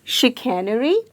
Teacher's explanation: the sound made by C is not K or S, it is sh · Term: SH sound